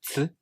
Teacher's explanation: For example, the TS sound, as in ts, you first make the T stop sound, and while releasing the air, the sound moves into the S fricative sound. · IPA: [ts]